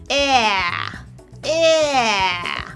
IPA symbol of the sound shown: ɛæ